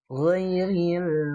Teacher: jadi ada ditahan dulu si anginnya baru ngalir suaranya. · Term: huruf goin